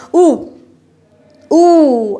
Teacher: सब में स्थिति जो हमारी जीभ की है वो कहाँ को जा रही है, वो पीछे को जा रही है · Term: पश्च स्वर